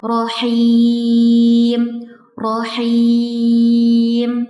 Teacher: Di sini ada huruf ro yang berfathah sekaligus bertasydid yang dibaca tafkhim atau tebal. Dan ada huruf ha yang makhrajnya ada di tengah tenggorokan. · Dan ada huruf ha yang makhrajnya ada di tengah tenggorokan. Sehingga bacaan yang paling sesuai adalah rahim.